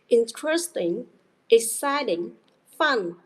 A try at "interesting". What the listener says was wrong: Interesting. Stress on the first syllable. Interesting, not interesting. yeah, so interesting.